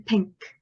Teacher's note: That is a bilabial sound, which means we make this sound utilizing our two lips.